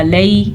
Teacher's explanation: ये नरमी से पढ़े जाने वाली या है और इसको लंबा यानी कि खींच के नहीं पढ़ते। लाम ज़बर या लई, बस इसकी इतनी मिक़दार है। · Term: या लीन